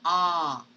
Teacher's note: this is a low vowel so you have to lower down your jaw to say ah